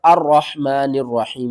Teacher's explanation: جب ہم نے یہاں پر وقف نہیں کرنا تو پھر نون کو ہم نے را کے ساتھ ملانا ہے